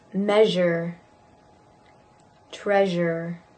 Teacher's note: Zh is also voiced.